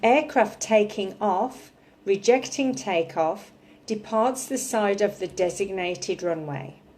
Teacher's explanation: so I'm emphasizing taking rejecting and side